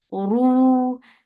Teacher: So ju, ru for the circle lips, make ra heavy and make it 2 counts long.